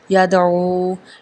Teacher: یا زبر دال ید، عین پیش واو او، یدعو۔ یدعو میں عین حروف حلقی میں سے ہے اور یہاں پہ واو مدہ بھی ادا ہوگا۔